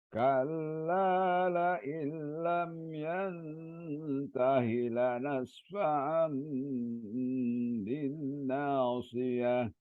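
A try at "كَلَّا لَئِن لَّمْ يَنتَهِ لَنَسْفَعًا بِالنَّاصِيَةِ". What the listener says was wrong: Hi-nya panjang, mat silah kosiro. Oh, bukan mat silah kosiro. Hi biasa. Mat silah kosiro.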